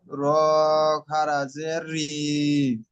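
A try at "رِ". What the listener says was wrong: প্রত্যেকটা পড়া রিম হয়ে যাচ্ছে, রিম হবে না, রি। র।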